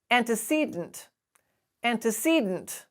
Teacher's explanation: the stress comes in the syllable just before the d so you lose the vowel that comes after it